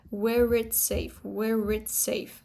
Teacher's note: The accent in itself is not rhotic because it's just British accent. We have r because it's followed by a vowel here, where it's safe